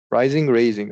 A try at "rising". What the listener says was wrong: No, rising. Rising, if there's no A, it's rising. Raising, if there's an A.